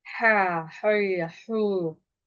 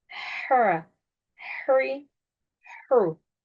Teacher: A sesiyle okumuyorum. A e arası bir sesle okuyorum. Üstünü esreyi ı i arası okuyorum. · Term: İnce